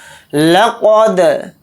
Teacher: دال کے اوپر جزم ہے تو دال کے اندر قلقلہ کر کے پڑھیں گے، قلقلہ اس طرح سے کریں گے۔